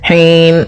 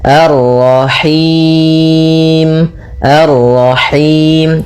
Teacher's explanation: Dia lepas dari yang namanya masuk hidung dan juga lepas dari namanya imalah yaitu harus kasrah sempurna